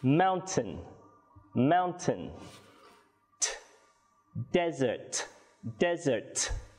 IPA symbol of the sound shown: t